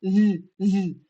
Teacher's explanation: Sua língua vibra, sua garganta vibra e não sai, não sai ar porque você tá prendendo ar na sua boca.